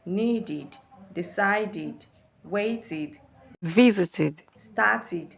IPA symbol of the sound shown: ɪd